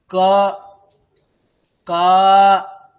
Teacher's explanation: আর অকারের উচ্চারণ আমরা কেমন করব? ওকারের মত না। একেবারে অ শোনাবে।